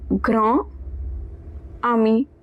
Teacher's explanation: both the words are pronounced as if they are a single word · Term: liaison